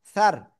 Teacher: জিব্বার আগে উপরে দুই দাঁতের আগার সাথে লাগাবেন, লাগিয়ে উচ্চারণ করবেন সার